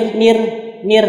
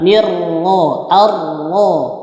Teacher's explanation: Jadi kalau dia teman-teman bertemu ro yang bertasydid, maka dia dibaca tebal.